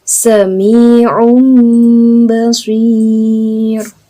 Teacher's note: tanwin ya atau nun sukun diubah menjadi suara mim sukun. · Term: iqlab